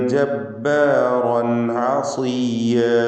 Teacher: ജബ്ബാറൻ റൻ എന്ന് റാഇനെ തഫ്ഖീം ചെയ്ത് തടിപ്പിച്ചുച്ചരിക്കണം. അതിലുള്ള റാഇൻ്റെ തൻവീനിന് ശേഷം ആയിന് വന്നതുകൊണ്ട് ഇൽഹാർ ഹൽക്കി നൽകി മണിക്കാതെ വെളിവാക്കുക